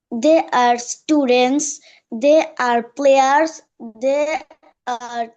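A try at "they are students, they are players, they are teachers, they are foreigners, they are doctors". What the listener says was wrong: Good, very good.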